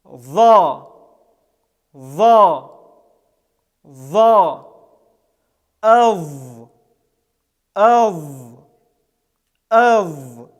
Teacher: Этот звук является щелевым, звонким, с участием голоса, является эмфатическим, то есть с напряжением органов речи произносится и подъемом задней спинки языка.